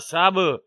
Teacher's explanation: با پہ قلقلہ ہوگا، با حروف قلقلہ میں سے ہے